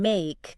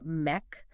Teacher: the I sound, like in make, can sometimes flatten to an E sound, like mech